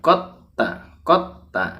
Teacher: maka Dal sukunnya tidak perlu dipantulkan tapi masukkan ke dalam ta